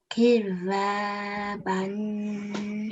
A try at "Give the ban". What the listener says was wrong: Beautiful. Well done. Excellent.